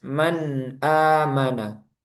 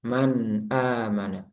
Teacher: nun sukun ketika bertemu dengan hamzah maka nunnya dibaca jelas